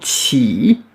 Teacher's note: C'est comme si on avait TCH, comme chouchou par exemple, le train qui fait chouchou. Mais en beaucoup plus sifflant, beaucoup plus suintant, en souriant. Chi. Chi, et le I, comme un I en français, avec un troisième ton, on double la voyelle.